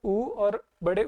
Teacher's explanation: जब ऊ और बड़े ऊ का जब उच्चारण करते हैं तो होठ राउंड होते हैं, अपने लिप्स राउंड होते हैं